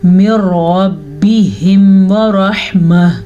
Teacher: را کو پر پڑھیں گے، ہا کے مخرج کا دھیان رکھیں گے · پھر نون ساکن کے بعد لام یا را میں سے را آیا ہوا ہے تو ہم یہاں پہ ادغام بلا غنہ کریں گے، یعنی ان دونوں کو تو ہم آپس میں ملائیں گے لیکن غنے کے بغیر ملائیں گے